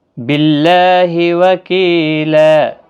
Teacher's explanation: کی یا مدہ ہے، ایک الف کی مقدار کے برابر کھینچ کر پڑھیں گے · باللہ اللہ کلامی زیر کی وجہ سے باریک پڑھا جائے گا، اس کے اوپر کھڑی زبر بھی ہے، ایک الف کی مقدار کے برابر کھینچ کر بھی پڑھا جائے گا۔